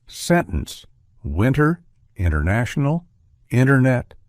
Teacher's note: in the words international, winter, internet, and sentence, the T often gets dropped entirely in casual speech. So instead of fully articulating the T, we commonly pronounce it as sentence, winter, international, internet, with the T mostly omitted. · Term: glottal T